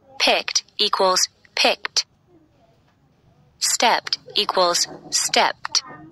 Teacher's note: After a voiceless sound, no vibration, it's pronounced T, like top.